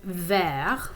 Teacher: the word for green in french is actually ver with just a silent t at the end